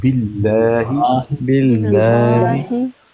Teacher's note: आगे लफ्ज़े अल्लाह है ना, बिल्लाहि, इसको बारीक पढ़ना है। लफ्ज़े अल्लाह से पहले ज़ेर हो तो बारीक पढ़ते हैं, बिल्लाहि, बिल्लाहि।